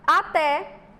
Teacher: A sílaba tônica é a última, então ela é oxítona.